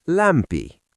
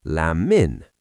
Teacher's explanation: What about MP? It softens into MM.